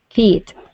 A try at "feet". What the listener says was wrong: Feet was just a little flat on there. Fit. Okay, so feet. Remember that E sound.